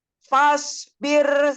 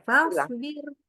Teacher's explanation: Oke, fa-nya lebih tipis sekarang. Fa-nya tipis, shotnya tebal.